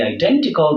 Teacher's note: as for the identical, the stress placement is on the syllable den